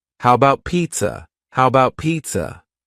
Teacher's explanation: the first a in the word about is gone it's just missing